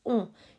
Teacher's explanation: You should hear it from your nose. Your nose should be vibrating when you say it. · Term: nasal sound